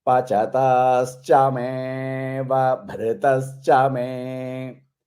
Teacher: So the ava, you should not say that is silent. So you have to elongate that me. And you should not give a breath after that. If you give a breath, you have to say avabhrita.